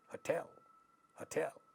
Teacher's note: so this this noun hotel is an exception of that rule this is a noun but it and it has two syllables but second syllable is getting stressed here not the first one